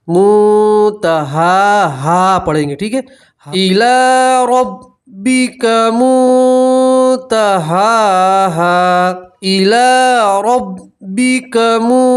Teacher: हा के ऊपर खड़ा ज़बर है तो वहाँ भी आप एक अलिफ के बराबर खींचेंगे और वफ़ करेंगे तो हा के साथ अलिफ पढ़ेंगे, मुतहाहा पढ़ेंगे, ठीक है।